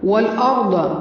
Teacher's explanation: والارض واو پر منہ کو گول کرنا ہے اور را کو پر پڑھنا ہے، ضاد کی آواز پر ہوگی